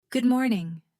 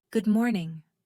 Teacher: Notice how I stress good and let morning go a little softer.